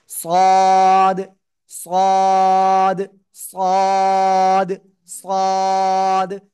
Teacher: সামনে নিচে দুই দাঁতের পেট ও আগার সাথে লাগাবেন, লাগিয়ে হালকা একটু আওয়াজ করে মোটা আওয়াজে পড়তে হবে।